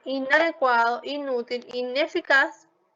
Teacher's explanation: En el caso de infalible va a ser labio dental y en el caso de inadecuado, inútil, ineficaz va a ser alveolar.